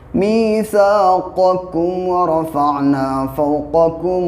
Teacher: اب یہ قاف ہے اور یہ کاف ہے، تو یہاں پہ خاص خیال رکھنا ہے کہ قاف یہ بڑا ہے، یعنی کہ یہ حلق سے نکلتا ہے قاف